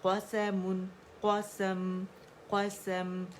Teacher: میم کی آواز میں توسط تھا, اظہار ہم نے اس کا کیا ہے تو آواز تھوڑی سی چلیے ایک کاؤنٹ کے لیے ٹھیک ہے.